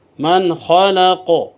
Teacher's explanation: زبر قا، من خلق، آگے وقف، من خلق، یہاں قلقلہ ہوگا، حروف قلقلہ میں سے قاف ہے، ساکن ہوگا جب تو یہاں قلقلہ کیا جائے گا